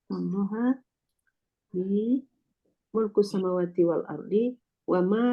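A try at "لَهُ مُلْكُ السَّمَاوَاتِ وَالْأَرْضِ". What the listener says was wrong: li, kalau li ko salah awak jadi itu.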